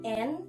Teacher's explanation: bunyi nasal laminoalveolar atau apikodental